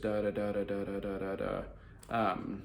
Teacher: They speak with the monotone, kind of droll and droning